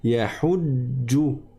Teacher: je suis resté longtemps sur la consonne, pas sur la voyelle.